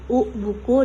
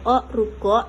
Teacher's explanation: Pada umumnya, bunyi vokal dengan seperti I, tiba, E, kere diucapkan dengan bibir dilebarkan. Sedangkan bunyi vokal di belakang seperti U, buku, dan O, ruko dengan bibir dibulatkan